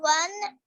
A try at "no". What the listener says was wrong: N-O. N-O means no. N-O pronounced as no, not one. No लिखा है ना, आप one ही से पढ़ रहे हो.